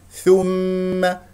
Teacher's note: والميم مشدده فيها غنه بمقدار الحركتين